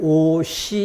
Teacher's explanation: 여는 법칙도 앞말의 받침이 뒷말의 첫소리로 예를 들어 옷과 이가 만나면 오시 이렇게 되는데 앞말의 받침 자리에 시옷이 뒤로 넘어가 시 이렇게 소리가 납니다.